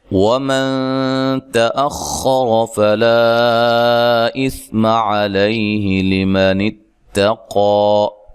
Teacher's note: تا کو باریک پڑھنا ہے. اخر خا کو موٹا اور را کو موٹا ادا کرنا ہے. فلا لام پہ جو مد ہے یہ مد جائز ہے.